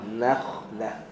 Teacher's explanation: Nun nipis, kha tebal. Na senyum, kha tak senyum.